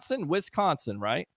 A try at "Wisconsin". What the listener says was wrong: Yeah, W-I-S. S isn't silent. It's not Wisconsin. It's Wisconsin.